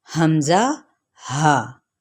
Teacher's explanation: تو جو حمزہ اور ہا، یہ آپ دیکھ رہے ہیں حمزہ ہا، یہ سینے کی طرف سے یعنی حلق کے آخری حصے سے ادا ہوتے ہیں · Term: اقصی حلق